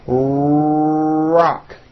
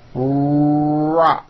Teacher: my lips are coming forward and my tongue moves back in my mouth and I push out the r sound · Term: American R